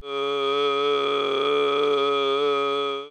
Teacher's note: I'm hearing two non-harmonic pitches simultaneously. That is diplophonia in this case, or some sort of polyphonia.